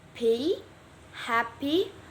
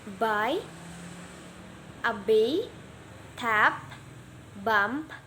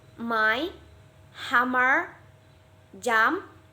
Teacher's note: Bilabial sounds produced with both lips. It's both lips coming together and creating a sound. Atau suara konsonan yang dihasilkan oleh kedua bibir secara bersamaan.